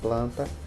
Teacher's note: quando a gente fala a palavra planta o n tem um som de vogais